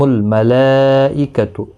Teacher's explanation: یہاں پر مد متصل ہے، 4 الف کی مقدار کے برابر کھینچ کر پڑھیں گے۔